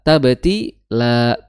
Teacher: Tabtila, tinya 2 harokat, la-nya 2 harokat, harus sama. Jangan sampai tabtila, la-nya kepanjangan. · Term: mad tobi'i